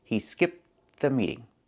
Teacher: Because you have that TH sound, the meeting, after, they blend together, and you don't really hear that T sound. · when you link the words, you don't really hear the T sound.